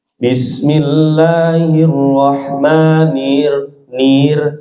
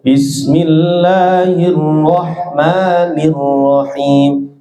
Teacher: Idghamkan dengan sempurna, masukkan ke ro dengan sempurna. Tebalkan suara ro fathah dan getarkan dengan sempurna.